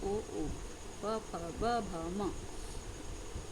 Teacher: दोनों होठ मिलकर ध्वनियाँ बनाते हैं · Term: ओष्ठ